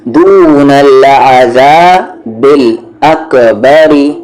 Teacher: اکبری میں را لائٹ کیونکہ وہاں پر آواز نیچے جا رہی ہے